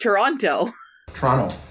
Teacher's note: Canadians don't pronounce the T.